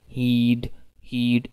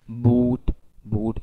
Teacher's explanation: your lips will be spreading but if you say boot boot your lips will be rounded